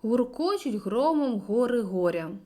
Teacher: алітерації на г р асонанс на о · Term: алітерація